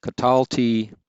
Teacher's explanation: note that for several of these the accent recedes back a syllable